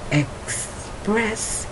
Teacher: you can hear I'm going ek, and you can hear it in the back of my throat